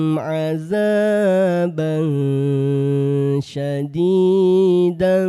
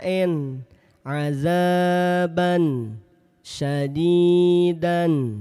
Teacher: Ketika tanwin jumpa huruf fa, tanwin jumpa huruf syin, maka tanwinnya dibaca samar dua harakat. Bukan dibaca jelas, bukan dibaca n adzaban syadidan. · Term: ikhfa